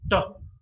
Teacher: when the tip of the tongue touches the alveolar, we've got this sound t. It's a voiceless sound.